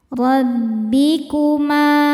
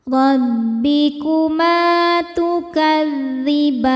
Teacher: Ma hukumnya mad thobi'i zohiri. Sebab ada alif didahului harakat fathah. Cara bacanya panjang dua harakat.